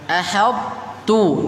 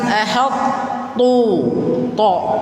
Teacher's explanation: Tu-nya tetap tipis, jangan jadi to. Jangan jadi ahadtu, bukan to yang keluar, tapi huruf tak. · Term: idgham naqis